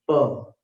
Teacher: प का उच्चारण भी दोनों होठों से होता है